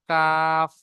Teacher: 5 নম্বর মাখরাজ জীবের গড়া হতে একটু আগে বাড়িয়ে তার বরাবর উপরে তালুর সাথে লাগিয়ে উচ্চারিত হয় মধ্যখান পেঁচানো কাফ।